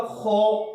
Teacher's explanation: خو کو موٹا ادا کرنا ہے۔ موٹا حروف ادا کرتے وقت اکثر بچے نا ہونٹوں کو گول کر جاتے ہیں